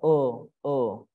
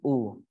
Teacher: ketika dhomah kita kan dhommah bibir kita harus dimajukan